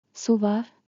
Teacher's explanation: With a rising tone turns into a question.